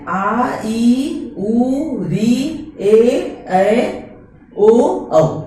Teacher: जिसके उच्चारण में हर्ष स्वर से दुगना समय लगता है, उसे ही हम लोग दीर्घ स्वर कहते हैं। दीर्घ स्वर के अंतर्गत आता है आ, बड़ी ई, बड़ा उ, दीर्घ री, ए, ओ और औ।